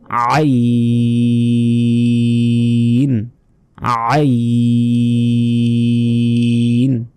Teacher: আ গলার ভেতর থেকে আইন মানে গলায় চাপ দিবেন আইন আইন গলায় অবশ্যই চাপ দিয়ে উচ্চারণ করতে হবে আইন অক্ষরটি